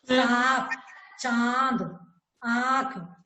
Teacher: तो हवा नाक और मुंह दोनों से एक साथ निकल रही है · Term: अनुनासिक